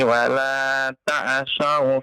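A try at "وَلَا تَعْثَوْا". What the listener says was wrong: Ain pun jangan antum kenakan qalqalah ya, sehingga ya wala ta'sa nah, jangan wala ta'sau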